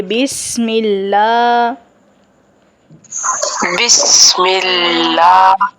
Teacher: سین پہ سیٹی کی آواز آنی چاہیے